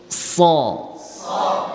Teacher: ঠোঁট গোল হবে না, অনেকেই সো স ঠোঁট গোল করে ফেলে